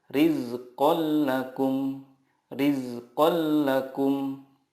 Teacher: Cara membacanya, meleburkan nun sukun ke huruf berikutnya tanpa gunnah. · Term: idgham bila gunnah